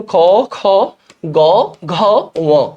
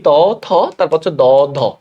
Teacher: তাহলে এই যে দেখো, এটা অল্প প্রাণ, মহাপ্রাণ, অল্প প্রাণ, মহাপ্রাণ। আমরা এভাবে মনে রাখতে পারি, 1 নাম্বার এবং 3 নাম্বারে অল্প প্রাণ, 2 নাম্বার এবং 4 নাম্বারে হচ্ছে মহাপ্রাণ